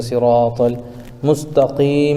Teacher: طل میں الف لام کے بعد حروف قمری میں سے میم آ رہا ہے، اس لیے صرف لام کو پڑھیں گے، الف کو نہ پڑھیں گے، جیسے صراط المستقیم میں یا ساکن سے پہلے قاف کے نیچے زیر ہے، اس لیے یا مدہ ہوگا، ان کو تھوڑا کھینچ کر پڑھیں، اور یہ مد عارض بھی ہوگا کیونکہ آیت کی وجہ سے میم ساکن ہو رہا ہے، تو صراط المستقیم۔